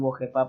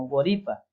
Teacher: la variante sur utiliza la R. Ellos no dicen wojepa como nosotros, sino woripa.